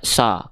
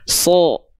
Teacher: Huruf sod itu termasuk ke dalam huruf yang tebal. Ketika dia berharokat fathah, maka dia nggak dibaca sa ketika fathah, tapi dibacanya so. Condong pada vokal O.